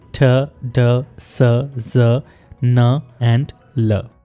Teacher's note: Alveolar ridge से 6 sounds produce होते हैं। ये वो जगह है जो आपके दांतों के पीछे उभरी हुई रिज है। इन साउंड्स को एल्वियोलर साउंड्स कहते हैं।